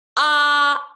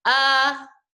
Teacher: if kids say ah and then they just relax their jaw muscles at all even a little bit they'll get uh